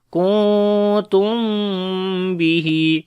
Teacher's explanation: after the meme sakin there is ba, we make ikhfa shafawi, the hiding sound of meme,